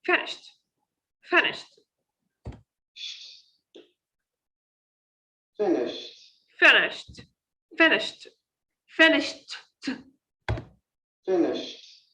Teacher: They make a stop between a voiceless sound and t sound. Be careful. It is not she t. No, we pronounce these sounds in a one shot, in a one line.